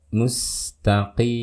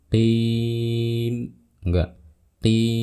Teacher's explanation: Tapi di sini kita akan membaca sepanjang 6 harokat dan diakhiri dengan huruf mim. Dan karena mim bersifat bainiyah dan ini di akhir bacaan kita harus melafalkan sifat bainiyahnya, dialirkan gunnahnya sedikit ya. Mustaqim. Nah, jangan qim, enggak qim, tahan sedikit seperti itu.